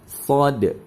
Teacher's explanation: Kemudian shad termasuk dalam huruf alisan, yaitu keluarnya huruf dengan meletakkan ujung lidah paling depan pada dinding dua gigi seri bawah sehingga suara keluar di antara gigi seri atas dan gigi seri bawah.